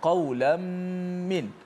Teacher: Maksudnya idgham ma'al gunnah, juga kena panjangkan gunnahnya.